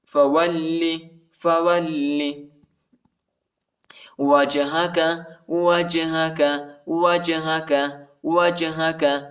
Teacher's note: لام کو شدت کے ساتھ سختی کے ساتھ پڑھیں گے